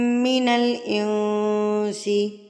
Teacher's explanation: میم مشدد پر بھی آپ نے غنہ کرنا ہے. نون مشدد اور میم مشدد پر آپ نے غنہ لازمی کرنا ہے.